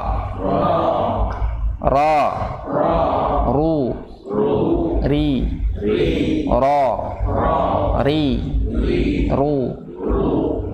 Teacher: Jadi kalau ru ketika dhammah baru boleh ngonyongin mulutnya. Kalau dia fathah tidak boleh.